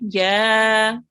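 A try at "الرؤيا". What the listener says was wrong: A tiny bit longer.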